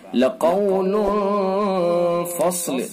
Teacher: صاد کو پر کر کے پڑھیں گے